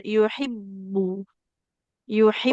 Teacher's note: Huruf ba itu di dua bibir.